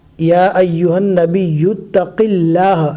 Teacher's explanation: اللہ کے لام کو باریک پڑھیں گے اس لیے کہ اللہ کے لام سے پہلے زیر ہے